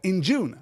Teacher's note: I'm putting the emphasis on the second syllable in June. I'm putting the emphasis in June rather than in.